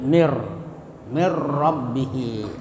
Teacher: Jadi dimasukkan bila gunnah, tidak mendengung. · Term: idgham bila gunnah